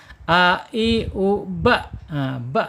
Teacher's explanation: Jadi dia asyidah tertahan suaranya.